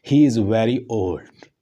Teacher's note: इसी तरह का एक हो रहा है जो फॉलिंग में है, ही इज़ वेरी ओल्ड, ही पे स्ट्रेस है और उसके बाद ही इज़ वेरी ओल्ड, तो ये भी एक फॉलिंग टोन को ज़ाहिर करता है